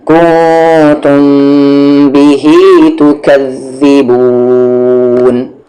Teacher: میم ساکن کے بعد با ہے، یہاں پر اخفا شفوی ہوگا، سمجھ لیں یہاں پر یہ غنہ کر کے پڑھیں گے